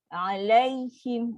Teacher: Ya sukun, huruf lin, suara turun bawah.